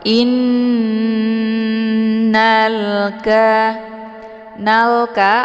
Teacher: nah Nun yang bertasdid ini dinamakan dengan gunah musyaddadah cara bacanya hamzahnya langsung dimasukkan ke dalam huruf nun dengan cara ditahan lebih kurang dua harakat